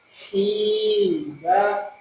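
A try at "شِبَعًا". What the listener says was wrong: Banyak 2 harokat. Shiba. Masih terlihat huruf sin. Jadi tafasyinya belum ada ya.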